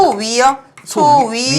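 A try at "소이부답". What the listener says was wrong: 위아래가 아니고 이.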